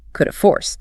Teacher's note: The mouth completely drops the H in have. It takes too much breath to produce. And the remaining vowel is reduced the laziest sound in the English language, the schwa sound and uh So, coulda have degrades all the way down to coulda.